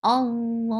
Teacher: It will turn into mad arid lis-sukun. You are giving sukun at the last letter, and this is temporary sukun, which will make the long vowel 4 counts long. It was 2 counts long before, now it's 4 counts long.